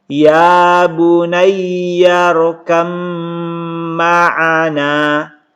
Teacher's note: Ini masuk dalam idgham mutajanisain, dibaca ya bunayya rukam ma'ana. Ini didengungkan teman-teman sekalian karena mim itu gunnah.